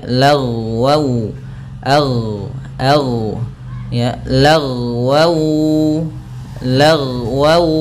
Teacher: ketika dia sukun jangan sampai memantul karena huruf gain tidak ada sifat qalqalahnya